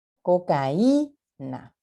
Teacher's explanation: cuando decimos cocaína, cargamos la fuerza de la voz en la I. Cocaína. No decimos cocaína. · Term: hiato acentual